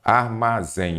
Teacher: a sílaba tônica é o zen